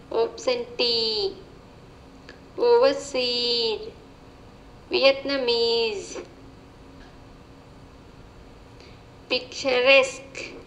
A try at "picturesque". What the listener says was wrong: Nice. Perfect.